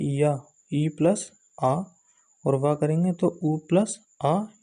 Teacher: तो जो ध्वनियाँ कभी स्वर होती हैं और कभी व्यंजन होती हैं उन्हें हम अर्धस्वर कहते हैं, क्योंकि इनका उच्चारण करते समय पहले ई, ऊ की ध्वनि आती है। जैसे हम या और वा का उच्चारण करेंगे तो पहले या, ई प्लस आ, और वा करेंगे तो ऊ प्लस आ, इससे जो है वा की उत्पत्ति होती है।